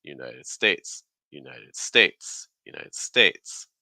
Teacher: key thing stressed on states that means that for United you're taking several steps down like · the id sound at the end of United needs to be low in pitch, United. Then you want to go higher on states.